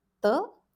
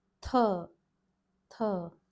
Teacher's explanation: This letter is th, th, aspiration added, and the T is dental. Tip of your tongue is on the teeth, and the h, puff of hair or aspiration is added